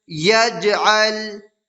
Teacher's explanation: یجعل، یا جیم زبر یج، عین لام زبر عل، یجعل، جیم حروف قلقلہ میں سے ہے اور جیم کے اوپر جزم ہے تو اس میں قلقلہ ہوگا